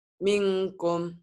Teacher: N-nya harus berubah jadi ang. Kenapa? Karena nun mati bertemu kaf. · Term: Ikhfa